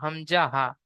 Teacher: এখানে দেখেন হামজাহা এক নম্বর মাখরাজ এক নম্বর মাখরাজ হলকের বা কন্ঠনালীর শুরু হতে উচ্চারিত হয়